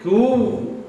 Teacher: So you're going to connect and hold the sound woo.